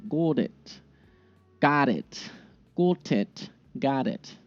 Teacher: that final T has a very soft D sound.